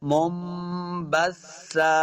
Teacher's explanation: منبثا با کو سا کے ساتھ ملا کے پڑھنا ہے. سا پہ نرمی سے پڑھیں گے، سیٹی کی آواز نہیں آنی چاہیے، اور جب وقف کریں گے تو ایک زبر کو ہم نے ساکن کر دینا ہے.